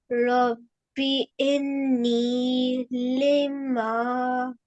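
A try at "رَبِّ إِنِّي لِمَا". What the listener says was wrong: So you have to stay for making gunna sound, you have to stay longer here.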